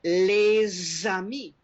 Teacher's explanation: Because the word ami starts with a vowel, you pronounce the usually silent S on the end of les.